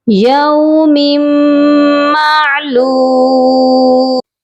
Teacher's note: میم کو جب میم کے ساتھ ملائیں گے، میم مشدد کے ساتھ، تو غنہ کر کے ملائیں گے